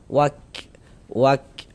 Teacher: Jadi ada nafas yang mengalir ketika kita mengucapkannya. Karena huruf kaf ini dia salah satu huruf yang memiliki sifat hames.